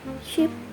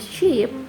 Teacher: Pada saat kita menyebutkan kata ship dan juga sheep dalam bahasa Inggris, dari dua kata ini tu kita hanya bisa membedakannya melalui durasi penyebutannya.